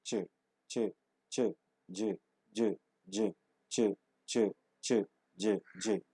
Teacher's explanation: complete closure and slow release, affricates